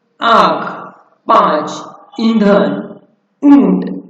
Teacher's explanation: दीर्घ स्वर के पश्चात आने वाले अनुस्वार अनुनासिक के समान बोला जाता है